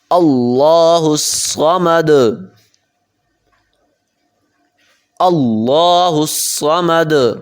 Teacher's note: صمد، اور آخر میں قلقلہ ہوگا